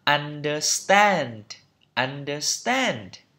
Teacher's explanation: Trọng âm tiết thứ 3 đây.